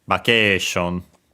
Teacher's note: the accent is just like in English, so on the K, vacation, low, high, and then everything else low